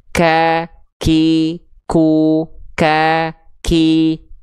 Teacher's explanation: Tapi kalau huruf kaf, nempel ke langit-langit lunak dan keras. · Sehingga kalau huruf qaf dia terlalu ke depan pelafalannya, jadi kurang dalam tapi agak ke depan, jadinya huruf kaf. Keluarlah percikan nafas.